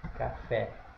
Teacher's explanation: Café, sílaba tônica é aqui, a última. Sílaba tônica é a última, então ela é oxítona.